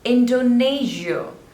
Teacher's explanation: There are three syllables, Indo, Ne, Zia, and the stress is on the second one, Indonesia. Not Shia, it's Zia, Zia.